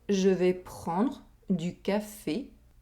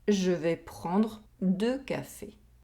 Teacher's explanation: We have the [y] sound in the first sentence, and the [ø] sound in the second sentence.